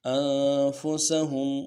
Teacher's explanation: نون ساکن ہے، غنہ کریں گے